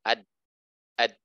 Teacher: dal itu dikeluarkan dari ujung lidah yang disentuhkan, ditempelkan ke pangkal gigi seri atas